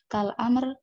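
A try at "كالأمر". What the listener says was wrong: Bacanya yang benar, Mbak ya. Nah, biasakan membaca kalimat bahasa Arab yang benar. Kal amri, ini ada hamzahnya. Kurang ya. Kal amri, wan nahyi, wal istifhami, ya, kan wal istifhami, wat tamanni wan nidai wa ghairiha.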